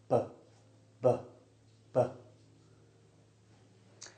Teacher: Voiced means that the sound starts in my throat and it's produced by the vocal cords. If you feel your throat when you say the sound, you should be able to feel some vibration. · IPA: /b/